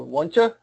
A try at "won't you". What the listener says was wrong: Good. Even a little more O.